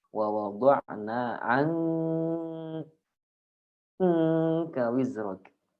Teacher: Sedangkan yang kedua, kadar gunnahnya itu 100%. Artinya ketika dipencet hidungnya dia mati.